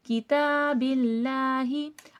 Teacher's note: अल्लाह लफ्ज़ से पहले ज़ेर है, अल्लाह लफ्ज़ सीधा पढ़ा जाएगा, मोटा नहीं किया जाएगा। किताबिल्लाही, और ये वाला हा अक्साए हलक से अदा होगा, ठीक है।